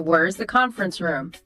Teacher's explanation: Your voice goes down on room.